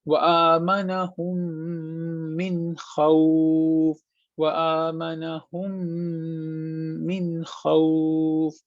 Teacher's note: मीम साकिन का कायदा, ऐसा मीम जिस पे सुकून हो, इसके बाद दूसरा मीम आ गया जिस पर हरकत है, तो हम क्या करेंगे, हम इस मीम को 2 सेकंड के लिए नाक में छुपाएंगे, इसके बाद अगले वाले मीम के साथ मिला देंगे